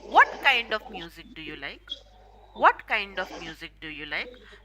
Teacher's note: when you ask wh questions your intonation will go from up to down